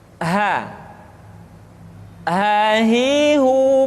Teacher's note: huruf H dikeluarkan dari tenggorokan yang terjauh sama seperti kita mengucapkan huruf a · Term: huruf ha